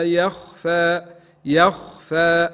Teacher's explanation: مد طبيعي ما نزيدو في طوله